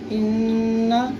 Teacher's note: نون مشدد ہے اس لیے یہاں پہ ہم غنہ کے ساتھ پڑھیں گے